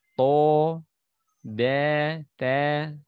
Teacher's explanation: Di ujung lidah. Ya, bertemu. Menyentuh pangkal gigi seri atas. Ya, belakang gigi seri atas, betul. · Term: satu makhraj